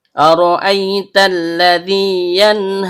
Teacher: Dimulai dengan hamza yang berbentuk seperti alif atau hamza qat'i yang berasal dari tenggorokan bagian bawah . Ra, ujung lidah bertemu dengan bagian belakang langit-langit mulut. · Ro, ujung lidah bertemu dengan langit-langit bagian belakang. Karena ro-nya berharokat fathah, maka hukum bacaannya tebal atau tabkhim. Kemudian hamzah asli yang keluar dari tenggorokan bagian bawah. · Kemudian hamzah asli yang keluar dari tenggorokan bagian bawah. Karena hamzahnya berharokat fathah diikuti ya sukun yang keluar dari tengah lidah naik memantul ke langit-langit, maka terjadi bacaan lin.